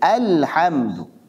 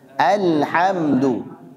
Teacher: jangan sampai Antum tebalkan huruf hamzah bacalah dia dengan tipis jangan sampai dibaca tebal